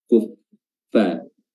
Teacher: Huruf fa itu ujung gigi seri atas bertemu dengan perut bibir bawah